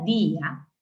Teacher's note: el acento no está en la a el acento está en la i en la vocal débil eso se llama yato acentual y inmediato me exige tilde Y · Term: hiato acentual